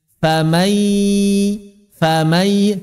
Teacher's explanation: Suara rongga hidungnya pun muncul. Di mulut suara ya, di hidung masih ada ghunahnya.